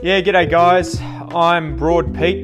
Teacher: It features relaxed pronunciation, wider diphthongs, and informal expression like g'day. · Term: Broad Australian English